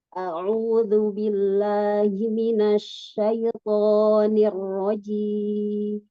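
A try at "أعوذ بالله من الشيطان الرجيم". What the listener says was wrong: A'udzu. Ain yang mau jelas.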